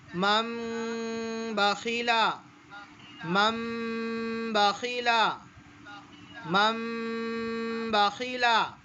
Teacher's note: لیکن اگر کہیں پر میم نہ بھی بنا ہو تو ہم کو یہ قاعدہ معلوم ہونا چاہیے کہ نون ساکن یا تنوین کے بعد با آئے تو نون ساکن یا تنوین کو میم سے بدل کر غنہ اور اخفا کے ساتھ پڑھیں گے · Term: اقلاب